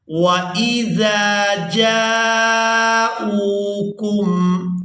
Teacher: وَإِذَا جَاءُوكُمْ، جیم کو الف مدہ اور مد کی وجہ سے کھینچیں گے۔ اس کے بعد حمزہ کو ہم نے واو مدہ کے ساتھ ملاتے ہوئے کھینچ کر ادا کرنا ہے۔